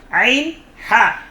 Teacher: কণ্ঠনালীর মধ্যখান থেকে, হলকের মধ্যখান থেকে 2টি হরফ উচ্চারিত হয়